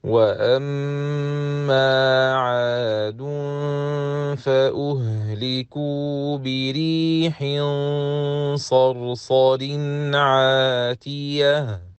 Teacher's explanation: So, we pronounce the Noon Sakina of Tanween clear. And when stopping at the end of the last word, we change Ta' al-Ta'nith into a Ha with Sukoon